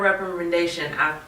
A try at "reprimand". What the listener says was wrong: Threw a couple extra syllables.